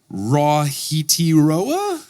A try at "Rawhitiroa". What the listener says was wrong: It is Rafiti Roa. No, the WH sound is more like an F sound.